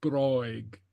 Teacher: Okay, and very often the last I in a case like this is not pronounced overtly, but kind of with a smile.